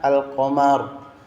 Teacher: lam tidak dilebur atau disamarkan melainkan diucapkan dengan jelas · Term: alif lam qamariah